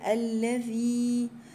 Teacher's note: من شر الوسواس الخناس الذي، الذي هنا حرف الذال من الحروف اللثوية زي ما قلنا، ووراها مد طبيعي في حرف الياء